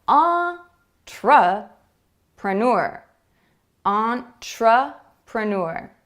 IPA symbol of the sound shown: ə